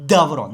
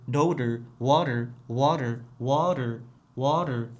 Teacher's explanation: Menga tilimni uchi tanglayga tegib tushish kerak. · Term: yumshoq d